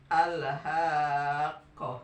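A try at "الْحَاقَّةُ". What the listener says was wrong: Kirang neken tasna al-haqqo.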